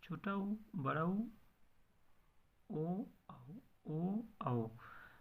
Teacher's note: जिन स्वरों के उच्चारण में ओष्ठ गोलाकार या वृत्ताकार हो जाते हैं उन्हें हम वृत्ताकार स्वर कहते हैं।